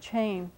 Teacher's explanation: be written with that qu and an A and an N maybe a little nasal mark to show that the vowel is a little bit nasal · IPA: tʃẽn